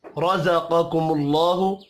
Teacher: رزقکم اللہ را پر پڑھا جائے گا زبر کی وجہ سے قاف حروف مستعلیہ ہے پہلا والا قاف اس کو پر پڑھیں گے دوسرا کاف باریک پڑھا جائے گا